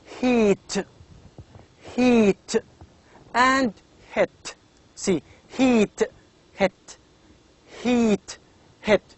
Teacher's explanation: so the position is front and the shape is high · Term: high front